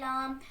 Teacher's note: زبان کے کنارے کے پشت کو اوپر والے 3 دانتوں کے مسوڑوں سے لگا کر ادا ہوتا ہے.